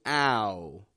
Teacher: making an ah, and then bringing the corners of the lips into the middle to go woo, ow. And we're putting an N after that. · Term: OU or OW diphthong